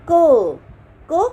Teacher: को के बाद अ की साउंड आ रही है और आपकी श्वास वायु में रुकावट पैदा हो रही है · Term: व्यंजन